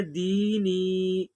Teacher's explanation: جیسے یہ دال یا زیر دی ہے تو اس کی اجرا ہم ایسے کریں گے، یا ساکن سے پہلے زیر ہے اس لیے یا مدہ ہوگا، یا مدہ کو ایک الف کے برابر کھینچ کر پڑھیں گے، اس کو حرف مدہ کہتے ہیں۔